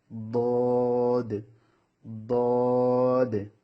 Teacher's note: তারপর এখানে দেখুন 7 নম্বর মাখারাজ জিহ্বার গোড়ার কিনারা উপরের মাড়ির দাঁতের গোড়ার সঙ্গে লাগিয়ে বদ